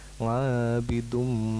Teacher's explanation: Kemudian di ayat yang keempat, ngabidum, itu domatain bertemu dengan mim, maka idgham bihunna, jadi mendengung